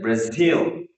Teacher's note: in case of Brazil, the last syllable is stressed